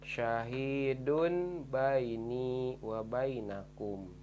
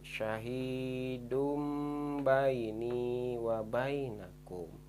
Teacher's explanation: Jadi dibacanya harus mim karena ini termasuk hukum iklab. Tanwin domah bertemu ba, dibaca mim. Syahidum baini wa bainakum.